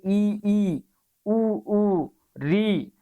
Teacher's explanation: संवृत स्वर जिन स्वरों का उच्चारण करते समय मुख प्राय बंद सा रहता है, जैसे ई, उ, री।